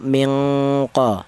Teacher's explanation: dengungnya lebih dominan daripada samarnya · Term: ifa adna